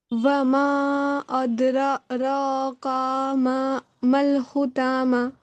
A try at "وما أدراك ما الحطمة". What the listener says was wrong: یہاں پہ کیوں کھینچ رہی ہیں